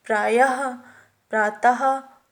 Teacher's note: विसर्ग का उच्चारण हा व्यंजन की तरह किया जाता है